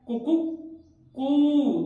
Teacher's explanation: जब एक मुर्गा बांग देता है वह तीनों काम में लेता है, ह्रस्व, दीर्घ और प्लुत। उसका उच्चारण होता है सबसे पहले छोटा ऊ, कु, उसके बाद होता है कु, उसके बाद होता है कुकू, मतलब इसको लंबा खींचता है तो वो होता है कुकु कु।